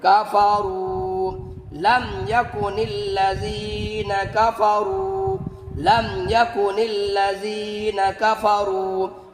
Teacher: واو ساکن ہے اور اس سے پہلے والے حرف را کے اوپر پیش ہے تو اس کو ہم کھینچ کر پڑھیں گے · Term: واو مدہ